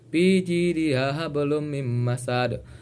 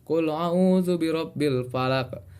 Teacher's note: Qalqalah kubro artinya qalqalah besar yang dibaca hurufnya dengan pantulan kuat. Qalqalah kubro terjadi ketika 5 huruf qalqalah tadi berada di akhir kalimat.